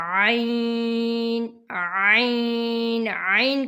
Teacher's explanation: آگے ہے عین، عین، عین کا بھی وہی مخرج ہے جو ہا کا ہے، حلق کے درمیان سے ہا، عین اور ہا ان دونوں کا ایک ہی مخرج ہے۔ عین حلق کے درمیان سے ادا ہوگا۔